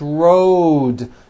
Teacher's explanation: also has a voiced d ending Road it's not wrote unvoiced It's rode the whole word is voiced